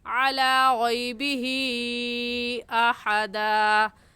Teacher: غیبی ہی میں حروف مدہ کے بعد حمزہ اگلے کلمے میں ہے، اس وجہ سے اس مد کا نام مد منفصل اور مد جائز ہوگا اور اس مد کو 3 الف کے برابر کھینچیں گے، اس سے کم یا زیادہ نہیں کھینچیں گے